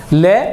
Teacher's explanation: जिसके उच्चारण में हवा जीभ के दोनों पार्श्व से निकल जाती है अर्थात जीभ की दोनों बगलो से बाहर निकल जाती है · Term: पार्श्विक व्यंजन